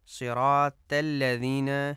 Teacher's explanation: لفظ صراط میں جو طا ہے اس کو تے پڑھا جاتا ہے، جو کہ درست نہیں ہے۔